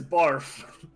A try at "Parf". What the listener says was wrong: No, Parf with a P.